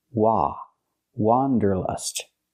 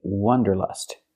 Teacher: The correct pronunciation of this word has the sound ah, like hot and stop. It's an open sound. · For the first vowel, for the first syllable, use the open ah sound, like hot and stop.